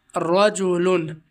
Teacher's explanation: را پر زبر ہے تو را کو پر پڑھیں گے